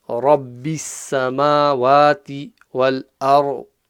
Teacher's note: Ra full mouth, ضاد full mouth.